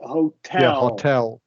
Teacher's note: a word like hotel is between two vowel sounds, but the syllable after T is stressed